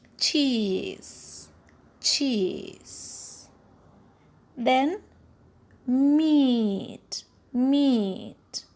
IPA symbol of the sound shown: i: